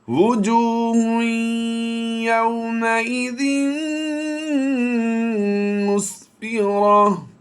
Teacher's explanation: دو پیش ہوں اور گول تا ہو تو اسے ہا ساکن سے بدل دیں گے، یعنی ہا پر جزم لگا دیں گے نقطے، اور یہ دو پیش جو ہیں ان کو ہم ختم کر دیں گے.